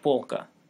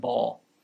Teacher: polka means shelf the l is velarized like the english word ball it's not bal with a plane l but ball with a